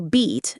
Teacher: prefortis clipping where vowel sounds are shortened before voiceless consonants